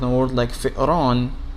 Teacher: you find that the glottal stop is in the middle with hamza ala nabra.